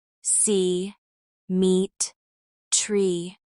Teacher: We can also work on the long E vowel, as in see, meet, and tree. This sound is tense, and the lips spread slightly.